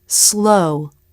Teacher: through the teeth to make the light l the word slow the light l is made with the tongue tip at the roof of the mouth